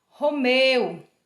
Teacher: Ele tem um som livre também por ser vogal, mas ele é pronunciado mais fraquinho. Romeu, o E tem um som mais forte que o U, porque o U é semivogal.